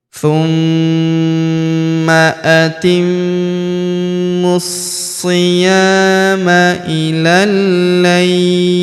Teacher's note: huruf la kita panjangkan 2, 4 atau 6 harokat karena di depan huruf la terdapat ya sukun sebelum huruf pemberhentian, dan huruf pemberhentian huruf li kita sukunkan atau kita matikan.